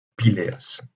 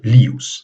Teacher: la diphtongue IE est très souvent réduite à une seule voyelle, que ce soit le E ou que ce soit le I